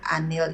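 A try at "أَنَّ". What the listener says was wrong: Annal ilaha kali. itu bukan an tapi anna. Anna.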